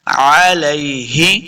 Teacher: عین کو تلفظ کے ساتھ پڑھنا ہے، حمزہ نہیں پڑھنا